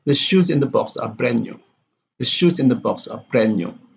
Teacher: Here we have the shoes in the box and brand new. Box is a content word and new is also a content word, but only shoes and brand here are stressed.